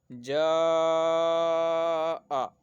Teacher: اس کو ایک الف سے لے کر 2 الف سے زائد 3 الف تک کھینچنا ہے، دو الف سے لے کر 3 یا 4 الف تک کھینچنا ہے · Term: مد متصل